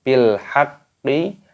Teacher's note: qafnya berharokat tasydid, ini diidghamkan, ditekan